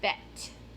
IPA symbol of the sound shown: e